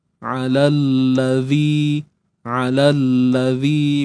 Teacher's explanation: Huruf mad ni akan digugurkan Mad akan digugurkan kita terus sahaja masuk pada lam